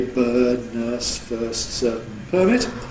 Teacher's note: New Yorkers can have a diphthong of the kind [ɜɪ].